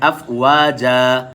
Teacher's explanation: جب وف کرتے ہیں تو 2 زبر کے ساتھ الف بھی پڑھا جاتا ہے